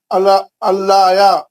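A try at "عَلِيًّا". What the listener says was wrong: अलैया यहाँ पे तस्दीद है, या को 2 बार पढ़ना है। या को 2 बार पढ़। अलैया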